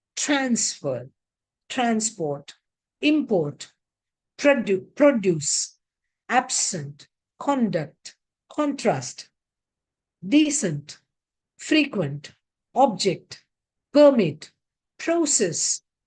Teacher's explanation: when they are used as nouns, the stress is on the first syllable. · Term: stress shift